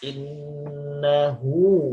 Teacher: Ya, namanya mad silah qasiroh. Innahu panjang. Hu-nya dua harokat.